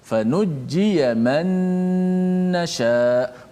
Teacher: Maka suara gunnah tu kena panjangkan, berserta dengan dengung.